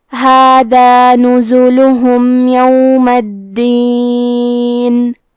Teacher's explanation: کلمت الدین میں حرف دال پہ تشدید ہے، لہذا دو حرف کے برابر دال کو پڑھنا ہے۔